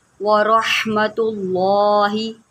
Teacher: लाम को भी मोटा करें